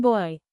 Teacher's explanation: the tongue moves from midback to high front